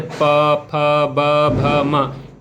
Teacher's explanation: इसमें ध्वनि जो है ओंठठों के कारण उत्पन्न होती है। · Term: ओठव्य व्यंजन